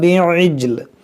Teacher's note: और जीम हुरूफ कलकला है, यहाँ पर कलकला होना चाहिए।